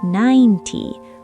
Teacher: The T part is short, fast, and quiet. · All the energy is on 9.